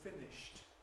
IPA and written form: ˈfɪnɪʃt (finished)